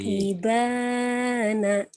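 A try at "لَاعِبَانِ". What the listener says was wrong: Oh, salah laibana. La-nya kan panjang. Barisnya juga salah. Barisnya salah. Laibana. Kan barisnya di bawah.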